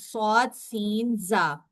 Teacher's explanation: सफीर सीटी की अरेबिक है। यह हरूफ अपने मखरज से तेज सीटी की तरह निकलते हैं। और यह हरूफ तीन हैं।